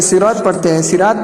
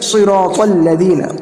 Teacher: صراط کے اندر صاد ہے اور را ہے اور تو ہے، تینوں پور حرف ہیں، تینوں حرف کو پور کریں گے